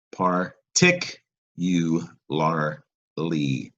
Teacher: it's a five five-syllable word stress on tick